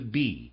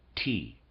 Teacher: which makes itself quite apparent to sensory super sensory contemplation that in the case of B we are dealing with a labial sound and in the case of t with a dental sound